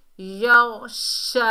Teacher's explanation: और गैन जो है हुरूफ़ मुस्ताला में से है, मोटा अदा होगा, फुल माउथ लेटर है। और शीन को अदा करते वक्त हमारी आवाज़ फैलती हुई महसूस होगी